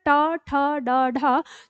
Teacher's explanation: आपकी जीभ जिस जगह पर जाकर छू रही है उसी जगह को हम मूर्धा कहते हैं